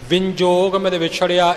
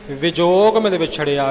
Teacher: ਵਿੰਜੋਗ ਮਿਲ ਵਿਛੜਿਆ ਇਉਂ ਬੋਲ ਜਾਂਦੇ ਨੇ, ਉਹ ਬਿਲਕੁਲ ਹੀ ਅਸ਼ੁੱਧ ਹੈ, ਬਹੁਤ ਗਲਤ ਹੈ। ਬਿੰਦੀ ਟਿੱਪੀ ਨਹੀਂ ਲਾਉਣੀ, ਵਿਜੋਗ ਮਿਲ ਵਿਛੜਿਆ, ਵਿੰਜੋਗ ਨਹੀਂ ਬੋਲਣਾ।